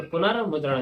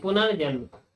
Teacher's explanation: पुनः एवं अंत में विसर्ग का रा हो जाता है